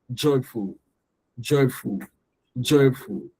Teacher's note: The full is going to be lower.